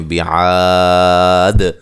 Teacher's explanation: فَعَلَ رَبُّكَ را کو موٹا ادا کریں گے، بِعَا الف مدہ ہے، وقف کی صورت میں آپ یہاں مد کے ساتھ وقف کر سکتے ہیں، بِعَاد، اور آخر میں دال جو ہے ساکن ہو جائے گی وقف کی صورت میں، تو قلقلہ کر کے اس کو ہم پڑھیں گے